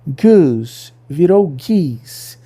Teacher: a vogal O puxada para frente pelo fantasma do plural antigo